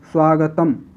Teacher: अब आप बोलो स्वागतम तो आपका मुख जो है मुंह है दोनों ओठ बिल्कुल बंद हो जाएंगे म के बाद किसी भी स्वर की कोई ध्वनि आपके मुख से उच्चारण के दौरान नहीं निकलेगी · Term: हलंत